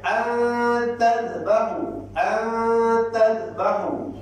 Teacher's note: Bila ikhfa, kita dengung dia seolah-olah. Seolah-olah ni, bukan saya kata NG. Seolah-olah terdapat NG di situ. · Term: ikhfa hakiki